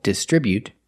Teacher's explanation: they distribute their products with a stress on the second syllable